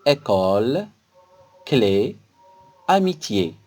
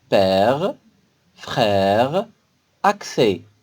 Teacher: c'est une voyelle ouverte, car quand on la prononce, notre bouche est grande ouverte · c'est une voyelle fermée, car quand on la prononce, notre bouche est quasiment fermée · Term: accent grave, accent aigu